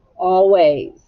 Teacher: What sound does the S make? That's right, it makes a Z sound.